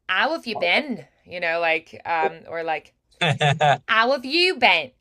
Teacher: if I try British, the H's are not really there. They're a little bit softer, right? And depending on the dialect, they might be completely gone.